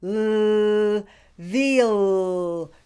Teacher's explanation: do it veal be sure to say the l sound clearly watch that i push my tongue out to touch my lower lip for the l